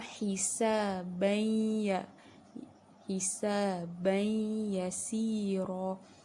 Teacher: tanwin masukkan terus kepada huruf ya dengan dengung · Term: idgham ma'al gunnah